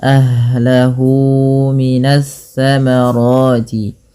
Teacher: kesalahannya adalah mengganti huruf tsa dengan sa atau sya minasyamarat ya. · mad silah qasirah itu di mana dipanjangkan dua harakat